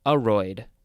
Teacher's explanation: it looks like it's more pronounced aroid. The first syllable is emphasized.